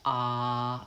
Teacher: When I say ah, I can feel vibration. My vocal folds are vibrating. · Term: voiced sound